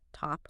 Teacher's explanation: Like in top there's a little puff of air released.